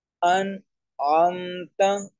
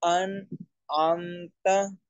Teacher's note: نون سیکنڈ کی آواز کو ہم بالکل واضح کر رہے ہیں، بالکل کلیئر آواز آ رہی ہے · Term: اظہار